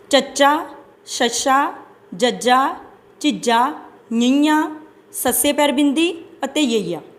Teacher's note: ਇਹਨਾਂ ਦੇ ਉਚਾਰਨ ਸਮੇਂ ਜੀਭ ਕਠੋਰ ਤਾਲੂ ਨੂੰ ਛੂੰਹਦੀ ਹੈ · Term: ਤਾਲਵੀ ਵਿਅੰਜਨ ਧੁਨੀਆਂ